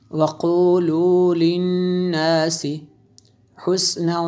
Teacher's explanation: نون مشدد ہے اس لیے یہاں پہ ہم نے غنہ کیا